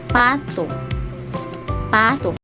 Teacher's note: Sa paraan ng artikulasyon, ito ay pasara na walang tinig.